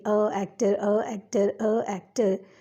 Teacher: Because if we will say a actor and we repeat it again, a actor, a actor, a actor, you will notice that two a sounds will merge together and will create confusion